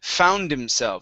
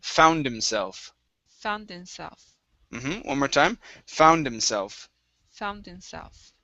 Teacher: so you're actually going to drop that H